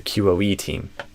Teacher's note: I think we're going to stress QOE more than team, typically.